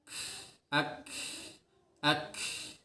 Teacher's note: Itu untuk kaf nempelnya ke antara langit-langit lunak dan langit-langit keras.